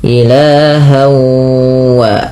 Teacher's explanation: Nah, ini kita kenal dengan idgham bi gunnah. Awalnya ilahan, ketemu waw menjadi ilahau. Langkah pertama seperti itu, yang kedua ditahan bunyi wawnya. Ilahau wa, idgham itu masuk bi gunnah dengan penahanan.